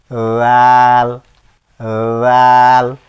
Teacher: রালটা উচ্চারণ হবে দেখেন দুই দাঁতের জিহ্বার আগা সামনের উপরে দুই দাঁতের আগার সাথে লাগিয়ে উচ্চারণ করতে হয়